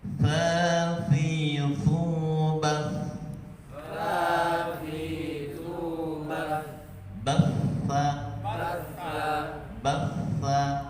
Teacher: Huruf tha, huruf zal dan huruf dha keluar dari ujung lidah, titik, ujung lidah sedikit keluar dan bertemu dengan ujung gigi seri bagian atas